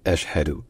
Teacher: ça commence par un coup de glotte, par une attaque, par une légère constriction de la gorge. Ashhadu. Et surtout qu'il y a un ch suivi d'un h.